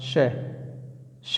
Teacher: ठीक, इसमें एक चीज़ और बचा हुआ है शायद, कौन सा, हाँ ये वाला बच गया यहाँ पर, शय शरीफे वाला शय। तो शय शरीफे वाला शय जो बोला जाता है वो तालु से बोला जाता है